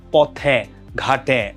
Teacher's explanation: পদের অন্তে এ সংবৃত হয় পদের অন্তে যখন থাকবে মানে শেষে যখন থাকবে তখন সেটা সংবৃৃত